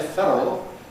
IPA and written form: ˈfedərəl (federal)